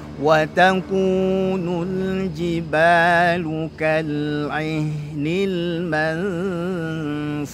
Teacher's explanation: lalu ha-nya ada hamas, ada rukhawah mengalir suaranya.